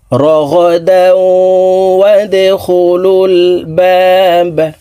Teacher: দাও এখানে ইদগামে বা গুন্নাহ, তানউইনের পর ইদগামে বা গুন্নার হরফ ওয়াও আছে, এই কারণে এই তানউইনওয়ালা দালটি তাসদিদওয়ালা ওয়ার সাথে গুন্নার সহিত মিলাইয়া পড়ব